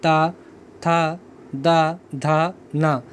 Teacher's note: जब आप ता बोलेंगे तो आपकी ज़ुबान की जो नोक होती है वो आगे की साइड में आकर टकराएगी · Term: ता वर्ग, दंत